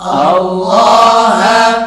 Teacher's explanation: Lafad Allah didahului fathah tebal bacanya. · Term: lam jalalah tafhim